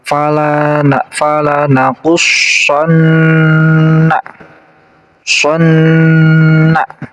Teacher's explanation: Di sini ada nun yang ditasydid, namanya adalah huruf gunnah. Jadi cara bacanya harus didengungkan, ditahan 2 harokat.